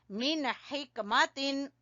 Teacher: हा को गले के दरमियान से